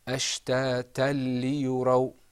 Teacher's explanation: Yes. Okay, so this idgham is without a ghunnah because we're not going to lengthen our voice. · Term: idgham without a ghunnah